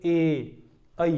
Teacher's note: ए और ऐ, ए ऐ जो है इनका जो उच्चारण है, हमारे स्थान जो है वो दो हैं, कंठ भी है और तालु भी है। स्वर कंठ से भी निकलता है और तालु से भी जो है जीवा स्पर्श करती है।